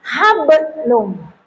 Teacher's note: Kol-kola kecil atau tipis, pantulannya kecil, pantulannya tipis. Kol-kola sugra itu jika ada huruf salah satu di antara huruf kol-kola yang mati di tengah-tengah kalimat, maka itulah yang disebut kol-kola sugra.